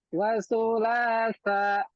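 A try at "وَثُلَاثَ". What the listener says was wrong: Coba lidahnya kurang keluar.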